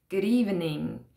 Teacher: for example good evening is linked and becomes good evening and the d sound from good really joins the word evening so it's really like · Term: linking sounds